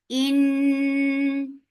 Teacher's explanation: Noon will get sifa of Gunna. This Gunna is Akmal, so keep the sound in your nose for a longer time.